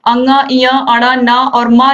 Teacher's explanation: अंगा, इया, अड़ा, ना और मा जो है इनका उच्चारण स्थान नासिका से होता है